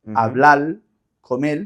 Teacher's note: La pronunciación de la R final por una L